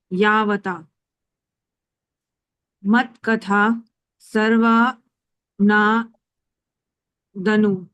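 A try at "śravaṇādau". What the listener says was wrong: Shravanadau. S ke upper dot is there then? Sh you should say, not sa.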